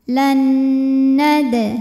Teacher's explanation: harakat wa inna Lan kemudian ada hukum idgham bhunah karena ada nun sukun menghadapi huruf nun berharakat maka Nun pertama dileburkan dimasukkan ke Nun kedua disertai bunyi dengungan Lan ini boleh juga disebut dengan Idgham mutamasil lain karena dua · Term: idgham bi gunnah